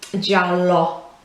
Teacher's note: whereas in English we would say yellow and finish with our mouth more closed, it's left more open at the end. If you say it in Italian, giallo is how you would end it properly, not giallo as we would do in English.